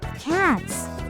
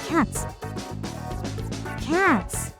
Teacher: By shortening the length of the vowel, you can reproduce the staccato sound